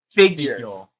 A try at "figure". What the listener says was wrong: You don't have to. You don't have to enunciate your R's. Figure. Say figure. Well, that is a way to say it, though.